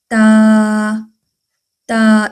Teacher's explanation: जुबान की नोक ऊपर वाले जो दांत हैं सनाया उलिया दांत जो है ऊपर वाले सामने वाले जो दांत हैं इनकी जड़ों से लगे। तो जुबान की नोक ऊपर वाले दांतों की जड़ों से लगे। · زبان کی نوک اوپر والے دانتوں کی جڑوں سے لگے تو تا